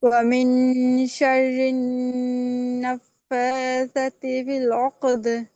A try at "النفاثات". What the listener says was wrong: আপনি তাড়াহুড়া করে পড়েন, নাফাসাত এবার সায় টান হয় নাই।